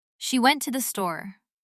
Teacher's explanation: The stressed words are she and store. They're louder, longer, and clearer. Went to the That's the squished part in the middle.